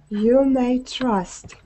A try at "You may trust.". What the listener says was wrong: And just when you separate these words a little bit more, okay? All right, even though we all know when you're saying things together the words flow.